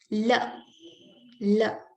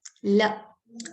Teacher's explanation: The tip of the tongue is going and touching the upper front teeth, hence producing the sound la.